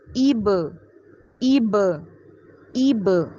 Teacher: تو ای کرتے ہوئے آپ نے با سے ملانا ہے، اور با ساکن ہے تو وہاں پہ آپ قلقلہ کریں گے، آواز کو ہلائیں گے